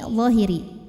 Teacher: maka dibacanya cukup kita lembutkan la l a w ya lawiri karena ada W sukun yang sebelumnya berbaris dah maka kita panjangkan dalnya dua harakat